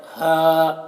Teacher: ये हा की आवाज़ हलक से निकलती है लेकिन बगैर हवा के साथ